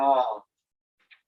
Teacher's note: your mouth is wide open, your tongue is just kind of laying down in the bottom going ah